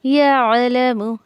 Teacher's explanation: عین کو اچھے سے حلق میں جو ہے وہ ٹھہرا کر نکالیں، جھٹکا نہ دے اور نہ اضافے حمزہ کرے